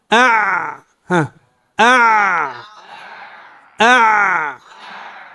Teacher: في العين أع أع أع لا نستطيع أن نبالغ في جريان صوتها. لماذا؟ لرجوع لسان المزمار إلى الخلف.